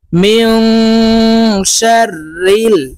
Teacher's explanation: নুন সাকিনের পরে ইকফার হরফ শিন আসছে তাই এই নুনকে নাকের ভিতরে লুকাইয়া গুন্নার সহিত পড়বো